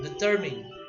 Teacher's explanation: the second syllable is the stressed one